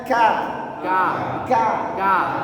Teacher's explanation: tengahnya lidah agak ke belakang sedikit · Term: huruf Kaf